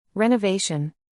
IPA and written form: ˌrɛ.nəˈveɪ.ʃən (Renovation)